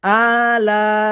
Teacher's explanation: লা 4 আলিফ পরিমাণ মধ্যে মুত্তাসিল টেনে পড়তে হবে।